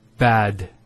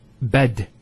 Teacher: notice the elongation of the a sound